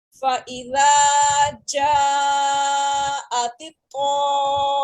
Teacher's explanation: میم مشدد غنہ بھی کریں گے ہم ساتھ میں میم کے اوپر